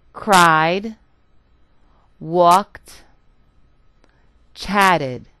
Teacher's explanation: in the first example I produced just the D sound cried in the second I produced the T sound walked